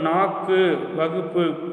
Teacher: ஒரு எடுத்துக்காட்டோட கொடுத்திருக்காங்க பாருங்க தனிக்குறில் அல்லாது சொல்லுக்கு இறுதியில் வல்லினமைகள் ஏறிய [இசை] உகரம் தன் ஒரு மாத்திரை அளவிலிருந்து அரை மாத்திரை அளவாக குறைந்து ஒலிக்கும் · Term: குற்றியல் உகரம்